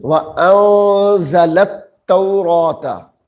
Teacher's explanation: اب یہاں پہ غنہ کریں گے، نون ساکن کے بعد حروف اخفاء ہے. وَأَنزَلَ التَّوْرَاةَ، واو زبر وا، حمزہ نون زبر ان، زا زبر زا، لام تا زبر لت، لام کو تا مشدد کے ساتھ ملائیں گے.